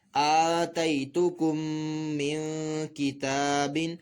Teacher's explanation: تا کے اوپر کھڑا زبر کھینچ کر پڑھا جائے گا